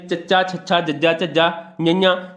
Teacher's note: ਤੁਸੀਂ ਬੋਲ ਕੇ ਵੇਖੋ ਤਾਂ ਤੁਹਾਡੀ ਜੀਭ ਤਾਲੂ ਨਾਲ ਛੂਹੇਗੀ